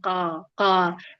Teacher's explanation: Saat melafazkan huruf kaf posisi pangkal lidah terlalu dalam. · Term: Kaf terlalu dalam